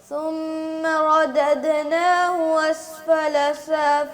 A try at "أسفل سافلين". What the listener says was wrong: اسفلا کی حمزہ واضح کریں. اسفلا.